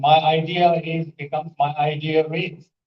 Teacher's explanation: they insert a r sound